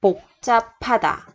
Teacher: 받침 là chữ bờ, theo sau là chữ hờ. Thì chỗ chữ hờ này mình đọc là chữ p, p. 복잡하다.